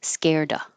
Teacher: I don't have to say the V. I can say scared of.